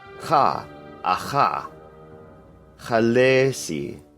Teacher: KH is a sound made in the same place as the letter Q, but we don't touch the tongue to the uvular part of the roof of the mouth. We leave a little gap and let some vibration happen back there.